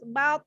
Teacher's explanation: to ketika disukunkan, pantulkan, kembalikan ke makhrajnya, yaitu adalah ujung lidah bertemu pangkal gigi atas.